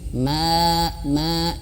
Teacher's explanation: ketika panjang daripada huruf mim ya ketika berharakat jangan masuk hidung